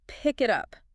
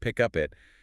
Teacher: The heavy energy of the phrase naturally lands on that little particle, the word up.